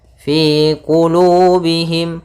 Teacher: ada kasrah bertemu Ya Sukun maka kita namakan dengan mad thii panjangnya dua harakat